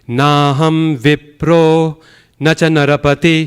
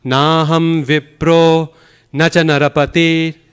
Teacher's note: So it has 2 caesuras, 2 pause spots.